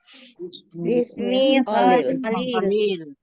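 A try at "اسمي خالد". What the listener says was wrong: Ismi Khalid. Bedakan tabe. Bedakan Khalid, kha-nya panjang dan Khalil itu panjang lamnya, bukan Khalil. Coba semuanya Indonesia Khalid.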